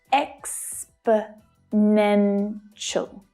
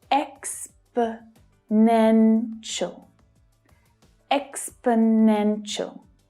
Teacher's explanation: The third is the strongest, though the first one is also stressed. The remaining 2 syllables are unstressed, so they reduce down, they become the schwa sound, which is always short and low in pitch.